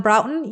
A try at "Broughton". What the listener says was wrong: It's Broughton. It's not brought on. It's Broughton.